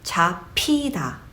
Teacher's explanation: by that h sound, your airflow kind of stops and it kind of makes B as an English alphabet into more of a plosive sound, p instead of b